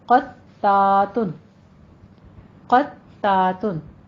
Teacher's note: قطاتن میں قوف پر ہے، تا باریک رکھنا ہے، قوف کو آپ نے پر رکھنا ہے اور ساتھ ہی تا کے اوپر تشدید ہے، اس کو آپ نے باریک رکھنا ہے، تا پر نہیں کرنا. تا کے آگے الف بھی ہے وہ آپ نے ادا کرنی ہے.